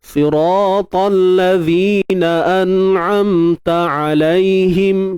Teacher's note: An'am itu gunnah asli. Tak boleh dipisahkan.